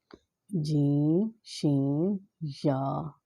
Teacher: زبان کا درمیان اور اس کے مقابل تالو کے ملاپ سے ادا ہوتے ہیں